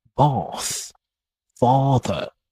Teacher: British also tend to have a longer vowel sound